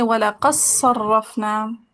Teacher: دال کا صوت میں ادغام لگا دیں